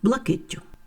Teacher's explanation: в слові блакить є в кінці один приголосний звук і в орудному відмінку однини відбувається подвоєння